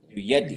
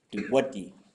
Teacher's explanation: this is a Y sound, but it can become a W.